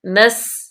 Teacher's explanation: سین صفیریہ میں سے ہے، اس پہ سیٹی کی آواز آئے